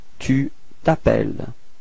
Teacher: We're starting with voyelle, so it's the same thing as previously, disappears, so we get this tu t'appelles, okay, final S is not pronounced